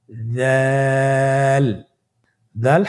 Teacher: জিহ্বার আগা। সামনের উপরের দুই দাঁতের আগার সঙ্গে লাগিয়ে উচ্চারিত হয়।